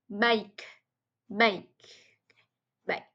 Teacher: final k may be glottalized